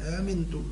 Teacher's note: يحقق الهمزة الأولى ويسهل الثانية مع ألف الإدخال